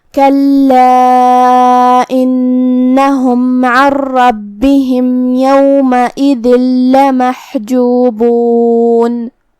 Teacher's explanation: लमहजूबून में हर्फुल हा को हम हलक के दरमियान वाले हिस्से से अदा करेंगे जो कि उस पे जज़म है तो हमें हा को ज़ाहिर करना है।